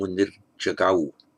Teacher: This isn't the nominative here, but it's followed by, it's an I visarga followed by a voiced consonant, so it becomes munir jagau